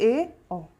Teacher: अर्धसंवृत में आधा मुख द्वार बंद रहेगा, उसे बोलते हैं अर्धसंवृत, ए, ओ।